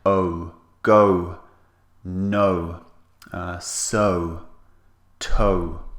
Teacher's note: we round the lips and it's two vowels pushed together